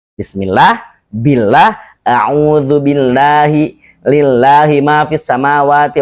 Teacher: Pokoknya lafaz Allah sebelumnya harokat kasroh maka dibaca tipis, dibaca la. Kalau fathah atau dhammah dibaca lo.